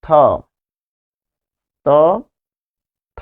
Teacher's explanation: খেয়াল করুন আপনার জিহ্বার যে মাথা সেটি কোথায় থাকে, অর্থাৎ জিহ্বার ডগা কোথায় থাকে, ত, থ, ত, থ। তাহলে জিভের যে ডগা সেটি থাকে উপরের পাটির দাঁতের সাথে। ফলে এই যে জিভের ডগা আর উপরের পাটি দাঁত।